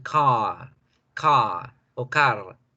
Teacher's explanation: porque la R no la necesitan pronunciar fuertemente.